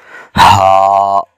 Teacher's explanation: گلے کے آخر سے سینے کی طرف والے حصے سے ادا ہو رہا ہے